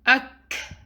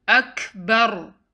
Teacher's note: Next word is akbar. Kaf has sukoon, hence you will do hams on kaf, which means you let breath out.